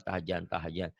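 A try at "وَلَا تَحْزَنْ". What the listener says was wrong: Tarsan, tahzan. Tahzan. Rapuh. Bukan tahjan. Fauzan. Wala tahzan. Zaitun. Zainab. Zaitun. Kurang rapuh tuh. Wala tahzan.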